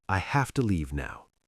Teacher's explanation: Have to becomes softer, faster, more connected.